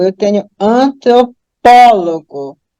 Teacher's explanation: A antepenúltima é a mais forte, portanto, a palavra é proparoxítona